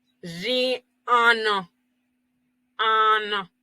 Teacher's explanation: pero UN termina en una N y después va en una A. Entonces todo eso se unifica.